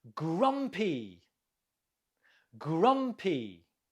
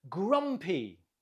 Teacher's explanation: Note the stress on the first syllable.